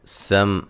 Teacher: میم ساکن کا اظہار ہے، غنہ نہیں کریں گے، سین کو باریک سیٹی سے ادا کریں گے، ہا الف مدہ ہے۔